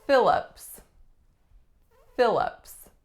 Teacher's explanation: 2 syllables, strongest syllable is the first, lax, I, fi, and the second syllable, lups, schwa.